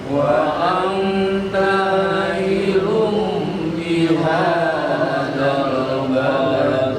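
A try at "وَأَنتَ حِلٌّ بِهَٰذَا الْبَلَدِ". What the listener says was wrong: Letaknya jangan dipanjangkan, letaknya pendek. Jadi wa anta jangan, tapi langsung. Wa anta illum bihadzal balad.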